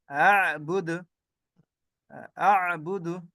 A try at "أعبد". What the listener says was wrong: হ্যাঁ হামজাটা সুন্দর হয়েছে আইনটাকে একটু ধরে রাখতে হবে আ'বুদ আ'বুদ